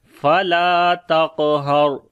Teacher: را کو موٹا پڑھیں گے، را کے اوپر جزم ہے اور اس سے پہلے زبر ہے، اس وجہ سے فلا تقہر۔